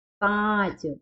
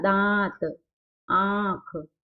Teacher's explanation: नाक से भी हो रहा है और मुंह से भी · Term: अनुनासिक